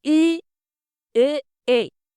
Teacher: जीभ का आगे वाले जो भाग होते हैं वो सक्रिय रहते हैं। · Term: अग्र स्वर